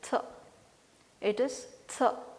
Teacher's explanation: It is th. Blade of your tongue, it will not be touching the teeth ridge, you will be releasing the air.